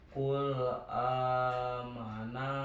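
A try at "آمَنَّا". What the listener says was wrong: Nah ditekan amanna atasnya ditekan ya amanna.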